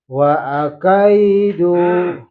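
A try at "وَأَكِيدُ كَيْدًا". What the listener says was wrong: Aki. Bunyinya pendek. Wa akidu kaidan.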